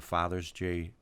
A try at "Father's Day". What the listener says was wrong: Father's Day. You put Father's J.